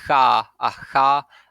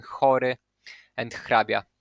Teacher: There is also voiceless velar fricative. So it's velar, which means that the tongue is the same position as for ka, and it's fricative, so you want to hiss the air as for sa